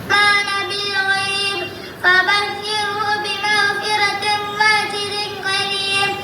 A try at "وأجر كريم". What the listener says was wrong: വഅജിരിൻ കരീം. വഅ ആ ഹംസിൻ്റെ ഉച്ചാരണം റെഡിക്ക് കേൾക്കുന്നില്ല മോൻ. വഅജിരിൻ കരീം. ഖാഫ് അല്ല, കാഫാണ്.